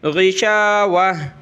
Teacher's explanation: گول تا پہ جب بھی وقف کریں گے قرآن مجید میں تو یہ گول تا ہا میں کنورٹ ہو جاتی ہے